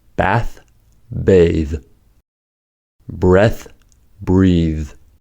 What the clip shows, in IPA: θ to ð